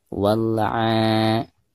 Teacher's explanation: Bacaan a di sini dipanjangkan 2 harokat. Karena dihukumi mad asli atau mad tabi'i.